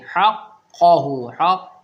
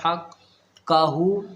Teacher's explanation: زبان کے آخر میں زبان کی جو جڑ ہوتی ہے نا اس کے اوپر ایک تالو ہوتا ہے نرم والا، وہاں پر ایک گوشت کا ٹکڑا لٹکا ہوا ہے، اس کو کیا بولتے ہیں کوا، اور انگلش میں یوالا بولتے ہیں. تو زبان کی جو ہماری آخری جو جڑ ہے، آخری جو حصہ ہے، اس کوے سے لگاؤ، اس گوشت کے ٹکڑے سے لگاؤ تو یہ قاف نکلے گا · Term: بڑا قاف